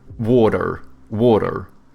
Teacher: Americans, they have like soft T's and then they pronounce their R's